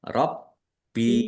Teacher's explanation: Baknya dibaca double, ada tasdidnya. Ya, ditekan dan ditahan biar tampak double. Rabbi. Bak kasroh ya sukun mat tobi'i panjang 2 harokat. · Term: mad thobi'i